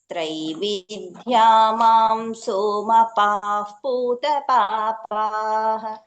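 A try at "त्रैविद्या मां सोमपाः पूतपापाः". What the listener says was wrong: త్రైవిద్య ఇట్లా ఇట్లా స్ట్రెస్ చేయొద్దు ఆ వర్డ్స్ ని ఇంకొంచెం లూస్ గా రావాలి అండ్ ఆ ఎక్కడైతే దీర్ఘం వస్తుందో దాన్ని ఎంతసేపు అనాలి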